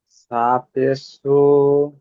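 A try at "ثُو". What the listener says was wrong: সা পেশ নয়, সা, ওয়াওটা যুক্ত করবেন।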